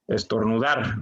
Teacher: la sílaba tónica es dar, porque es la sílaba que suena con mayor intensidad dentro de la palabra. Es decir, tenemos estornudar, dar suena más fuerte, o lo pronunciamos más fuerte, digamos.